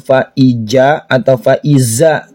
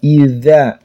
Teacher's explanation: Dza ini di ujung lidah. Bukan faiza atau faizza tapi dza di ujung lidah. Idza. Ada alif panjang dua harakat. · Fa itu menggunakan F, bukan pa, tapi fa. Fa'idza, za ini di ujung lidah